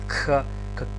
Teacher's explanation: Кхи или по договор Хи, правилно е да се изговара Кх, значи едно К и еден здив Х